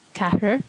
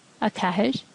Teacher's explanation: the broad R and slender R at the end of these two words sound pretty similar